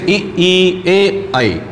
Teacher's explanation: उच्चारण करने पर ओंठों की आकृति अवृत्ताकार होती है